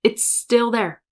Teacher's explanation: You just draw out that S a tiny, tiny bit.